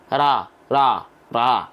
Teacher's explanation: ketika tebal ya dia akan otomatis mengangkat bagian pangkal lidah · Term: Huruf tebal